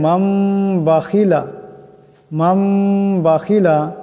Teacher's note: তনবিন কিংবা তো নুন সাকিনের পর যদি বা আসে তবে এই নুন নুনকে মিম দিয়া বদলাইয়া গুন্নার সাথে পড়তে হয় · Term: ইকলাব